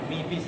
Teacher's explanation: Disambung, mi-nya pendek langsung mi bis itu caranya.